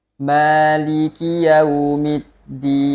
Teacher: huruf dal dalam keadaan bertasydid itu tidak ada aliran nafas dan tidak ada aliran suara